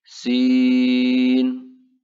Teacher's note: Kemudian yang kedua, jika dieja terdiri 3 huruf, maka dibaca panjang atau mad dengan panjang 6 harokat. Contohnya huruf sin, jika dieja sin, ada 3 huruf, maka dibaca panjang 6 harokat